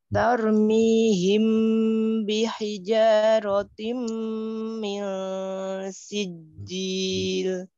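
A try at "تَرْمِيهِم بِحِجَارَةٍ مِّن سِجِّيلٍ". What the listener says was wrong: Ra' tebalnya yuk sempurnakan. Taro. Jarati. Jarati.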